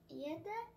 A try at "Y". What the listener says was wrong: Ay, es un español, güey. Una I en español. Y.